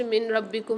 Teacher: نون ساکن کے بعد را رہی ہے، یہاں پر ادغام بلا غنہ کا قاعدہ ہو رہا ہے، یعنی یہاں پر ہم غنہ نہیں کریں گے بلکہ ادغام کر کے پڑھیں گے